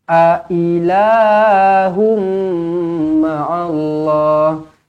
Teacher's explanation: Ailah, a pendek, i pendek, la panjang.